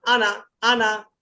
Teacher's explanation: এই আনা টানা যাবে না